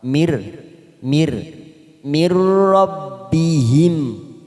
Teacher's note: huruf nun sukun bertemu dengan huruf ro namanya idgham bilagunnah hanya masuk tanpa mendengung tanpa ditekan lama-lama